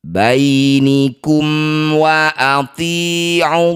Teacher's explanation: Cara bacanya baca jelas bunyi mim. Rapatkan bibir dengan sempurna tanpa dengung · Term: izhar syafawi